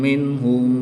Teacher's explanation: نون ساکن کے بعد ہا حروف حلقی میں سے ہے تو یہاں پر اظہار ہوگا، نون ساکن کو خوب ظاہر کریں گے، غنہ نہیں کریں گے۔ میم ساکن کے بعد حرف با اور میم کے علاوہ حرف واو ہے تو یہاں پر اظہار شفوی ہوگا، یہاں پر بھی غنہ نہیں کریں گے